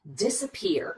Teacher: We get right to that third syllable that receives the primary stress.